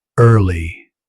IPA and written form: ˈɜːrli (Early)